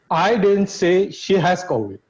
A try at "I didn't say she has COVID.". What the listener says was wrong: Again, see where the emphasis on which word? I didn't say she has COVID. That has is emphasized.